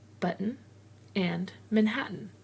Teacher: It's a word broken with a pause at the T